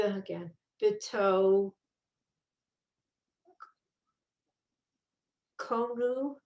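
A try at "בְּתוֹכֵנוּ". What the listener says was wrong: It's a chaf. Chenu. B'tochenu.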